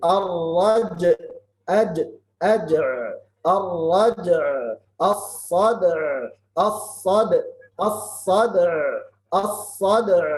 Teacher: qalqala dengan sukun, kemudian ain sukun